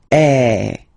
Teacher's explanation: the sound is really open and normally your mouth should be opened a little bit more · normally your mouth should be opened a little bit more than with the accent aigu as well. Okay, so it goes like eh. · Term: accent grave